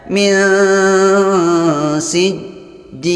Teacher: Cara membacanya didengungkan dan disamarkan. Disamarkan antara bunyi nun dan sin. Artinya bukan berbunyi nun, bukan berbunyi sin, tapi samar di antara kedua-duanya. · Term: ikhfa